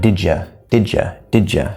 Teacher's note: Now you can reduce in pronunciation to ya, that vowel sound instead of u, we can change it to ya, which is common, we don't have to.